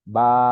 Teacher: খাড়া জবর উচ্চারণ হচ্ছিল জবরের মতোই, জাস্ট খালি একটু টান দিয়ে পড়তে হয়।